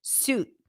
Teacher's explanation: There are some dialects that you would hear the T, where you would hear the T popped at the end, suit. Okay, that's the tense oo sound after an S, and then a T. · that's the tense o sound after an s